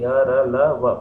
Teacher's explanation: बोलते वक्त मुंह से कम मात्रा में वायु निकलती है, कम जोर देना पड़ता है। देखिए य र ल व बहुत आसानी से बोल दिया हमने। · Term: अल्प प्राण